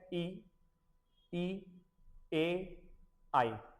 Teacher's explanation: इ ए आई तो ये जीभ की नोक से उच्चारित होता है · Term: अग्र